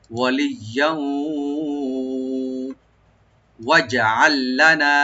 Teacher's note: যেহেতু ওয়াও আসছে এখানে আমরা ইদগাম করব গুন্না সহকারে